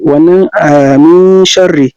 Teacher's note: za mu yi gunna amma ba za mu kaurara ba saboda shinu baya cikin harfan da ake kaurara su. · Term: ikhfa